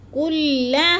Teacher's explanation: حروف مدہ کے بعد حمزہ اسی کلمے میں آ گیا ہے تو مد متصل کو 4 حرکات کے برابر ہم نے لمبا کر کے پڑھنا ہے۔ کلھا، ہا کو بھی لمبا کرنا ہے تھوڑا سا، کیونکہ ادھر الف مدہ ہے